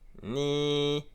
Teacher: cette fois, la consonne initiale est basse. Donc le ton est descendant.